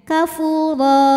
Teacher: Mad iwad karena ada harakat tanwin fathah yang diberhentikan atau diwakafkan cara bacanya D dibaca panjang dua harakat tanpa huruf n